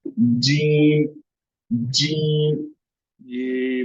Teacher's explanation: जबान का बीच ऊपर के तालु से मिलकर जीम शीन या अदा होते हैं।